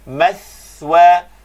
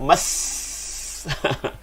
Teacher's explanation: sa ini sukun, keluarkan lidah. Mathwa. Bunyi sa ini bunyi lemah.